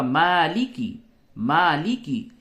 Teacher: मा के ऊपर खड़ा जबर है इसको थोड़ा सा खींचिए और जबर जेर पेश को जल्दी से पढ़िए तो ये होगा